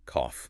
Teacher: The air pushes through your bottom lip. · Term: F sound